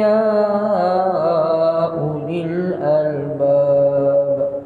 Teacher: Ya ulil albab, albab dia mad-'arid lis-sukun, ba qalqalah.